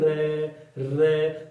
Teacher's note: रे का जब हम उच्चारण करते हैं तो हमारी जिह्वा में कंपन होता है। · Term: प्रकंपित